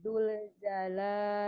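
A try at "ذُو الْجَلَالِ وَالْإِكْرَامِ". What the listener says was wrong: Jangan Dul, itu masih Dul. Zul. Zul.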